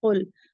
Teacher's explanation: تو قل، قاف مفخم لیٹر سے ہے تو اسے پورا ماؤتھ بھر کے پڑھیں گے، ہیوی پڑھیں گے قل. اور لام شبہ مستعلیہ سے ہے، جب یہ حروف مستعلیہ کے ساتھ آئے گا تو یہ بھی ہیوی ہی پڑھا جائے گا